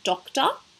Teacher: traditionally as Australians it will make the schwa sound that says ah